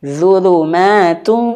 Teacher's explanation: Yang harus kita sempurnakan adalah huruf wawnya wajib masuk hidung. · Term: idgham bi gunnah